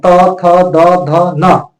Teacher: त वर्ग का उच्चारण दांत से